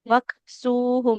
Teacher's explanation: Kafnya mengalirkan nafas. Tadi kurang, Bu ya.